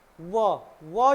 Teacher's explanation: व के उच्चारण करते समय हमारी जीभ जो है दांतों के तरफ को भी आती है और होठों का प्रयोग भी होता है इसलिए इनको क्या बोलते हैं दंतोष्ठय देखो व व जब बोलते हैं तो इसको इसको क्या बोलते हैं इसको बोलते हैं दंतोष्ठय है ना दंतोष्ठय बोलते हैं दांत और ऊंटों का दोनों का प्रयोग होता है।